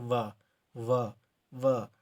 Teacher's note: जो नीचे का होंठ होगा वो ऊपर के दांतों को स्पर्श करता है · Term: दंत ओष्ठ